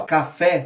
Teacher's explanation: Quando eu digo ali, ó, café, a gente sabe que a tônica é fé. É a vogal que se destaca, né?